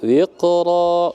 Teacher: qa itu qalqalah sugro, jadi ringan saja.